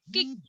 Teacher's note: suara yang terbentuk oleh bagian belakang lidah terhadap langit-langit lunak atau velum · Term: velar